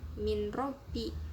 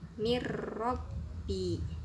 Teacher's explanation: Contoh pada lafadz min robbi, itu dibacanya bukan min robbi, harus dimasukkan bunyi n, huruf n ke ro nya, jadi dibacanya mir robbi. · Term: idgham bila gunnah